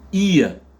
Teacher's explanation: les deux voyelles EA sont prononcées avec la diphtongue IA. IA, IA.